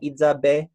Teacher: It's a short verb, just consists of a consonant, but it's followed by the high tone E final vowel that's kind of associated with these irrealis contexts.